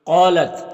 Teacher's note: قالت، قوف یہ حروف مستعلیہ میں سے ہے تو اسے پر پڑھیں گے۔ یہاں پر الف سے پہلے قوف کے اوپر زبر ہے تو الف مدہ ہوگا۔ الف مدہ کو ایک الف کے برابر کھینچ کر پڑھتے ہیں۔